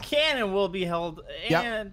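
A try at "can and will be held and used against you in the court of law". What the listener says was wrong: Mouth more open, more open like this. Your mouth is too closed when you're saying your words.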